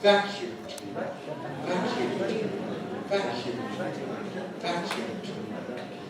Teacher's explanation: Let's hear the falling tone on vac. That's the important thing. That's the nucleus of the intonation.